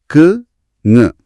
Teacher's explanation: நாவோட முதற பகுதி அதாவது அடிப்பகுதி அண்ணத்தின் அடிப்பகுதியை பொருந்துவதால பிறக்குது